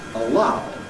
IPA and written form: əˈɫaʊ (allow)